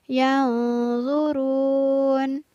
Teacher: di situ ada huruf nun sukun yang bertemu dengan huruf zo. Maka nun sukunnya dibaca samar.